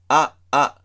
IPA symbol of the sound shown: a, a